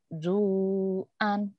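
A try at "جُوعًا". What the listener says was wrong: Junya keras. Ju'an ya keras.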